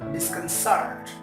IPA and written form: ˌdɪskənˈsəːt (Disconcert)